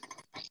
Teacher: tanwin bertemu dengan huruf alif. Ini kalau wakof dibaca fathah dan panjang 2 harokat. Ini namanya mat iwad.